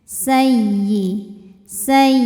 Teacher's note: ya tasydid kita bunyikan dengan naber jadi kita naikkan intonasi nada kita ya tanpa harus menahannya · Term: nabar